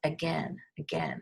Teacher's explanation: And it does have a short I sound, but it's really a schwa.